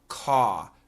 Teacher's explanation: COSTS, the sound has an AW vowel. Costs. CAUSE also has the AW vowel.